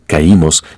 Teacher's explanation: En la palabra caímos, la mayor fuerza de voz está en la I, que está junto a una A